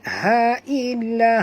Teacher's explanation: Ha sini ha simple. Bunyinya daripada halkum.